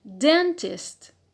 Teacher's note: So here stress on the penult because we have a short vowel in the last syllable, so we have applied rule 2a, short vowel.